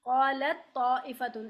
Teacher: अगर ता का वो हम्स बाकी रहता तो हम कहते कि ये नाकिस है, लेकिन इसका ता का हम्स बाकी नहीं रहता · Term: ताम